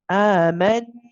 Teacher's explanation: The meme is joined with the noon, and the noon is mushaddad, so we're going to prolong the noon, the joining of the noon.